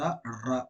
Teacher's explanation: நாவின் நுனி, அன்னத்தின் முதல் பகுதியை தொட்டு வருவதால் ரகரம் பிறக்கிறது